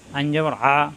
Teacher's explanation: আইন যাবর আ, কণ্ঠনালীতে চাপ দিয়ে